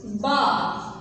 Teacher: فتحہ کی آواز کو ہم اوپر کو تھوڑا سا اٹھاتے ہیں لیکن اس کو بغیر لمبا کی ہم پڑھے ہوتے ہیں، لیکن جو تنوین ہے اس کی آواز میں نون کی آواز بھی آتی ہے، ٹھیک ہے؟